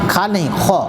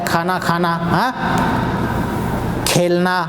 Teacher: خو ہمیشہ موٹا ہوتا ہے اور یہ عربی والا خو ہے. اردو میں تو کاف اور ہا ملا کے خو ہوتا ہے، کھانا کھانا، کھیلنا.